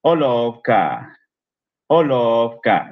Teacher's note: La o es larga y la a también. La o de love.